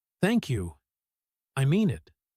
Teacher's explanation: The word thank you here is slow and sincere, stretched gently, completely different from a quick, polite thanks you might say to a stranger holding a door open for you.